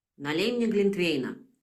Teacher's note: So here in 5, the string is pour imperative me mulled wine. By default, you would produce it with a hat contour and interpret it as a command.